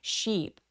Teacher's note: Sheep은 ship 빠르지 않고요. 굉장히 길게 sheep 하면서 입술도 옆으로 쭉 찢어서 sheep. 이라고 연결해 주세요.